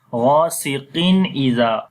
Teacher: Ra we read in light sound. Ghain we read heavy sound, and we long also Ra due to Alif Madda.